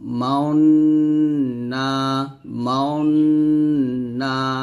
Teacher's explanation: সূরা ইউসুফে এই আয়াতটা পাবেন, এই যে এখানে এই আয়াতটা মাউন না, এই যে এখানে মাউন, এখানে যে গুন্নাটা আদায় করব, গুন্নাটা আদায় করার সময় আমাদের ঠোঁটটা গোল করে ফেলবো, মাউন না, মাউন না, এরকম ভাবে ইসমাম করতে হবে, ঠোঁট গোল করে গুন্না আদায় করতে হয়, এটাকে মূলত ইসমাম বলা হয়।